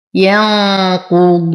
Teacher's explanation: لدينا يا ساكنة ما قبلها مكسور فهما الطبيعي حركتين. ينقو نون ساكنة وبعدها القاف فالحكم إخفاء مع غنة كاملة مفخمة · واو ساكنة ما قبلها مضموم فهو من الطبيعي حركتين